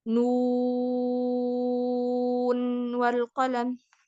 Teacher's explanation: Nu 2 harokat, mat tabi'i ketemu nun sukun. Jadi 6 harokat.